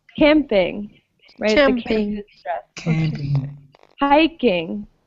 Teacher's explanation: we emphasize the first part of the word camping